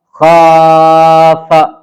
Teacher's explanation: خا الف زبر خا، فا زبر فا، خاف۔ ٹھیک ہے، خا کو کھینچا اور فا کو نہیں، کیونکہ خا پہ الف مد ہے اور فا پہ زبر ہے صرف، اس لیے فا کو جلدی پڑھنا ہے